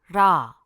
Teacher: l is a tap sound pronounced similarly to the r in road